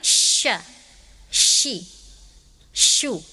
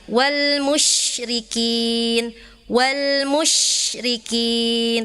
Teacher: Nah, syin ini dia ada sifatnya yang khususnya sifatnya takasyi artinya nih banyak udara di mulut menyebar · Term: huruf syin